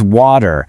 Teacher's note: you're using a very soft T sound there that almost feels like a D.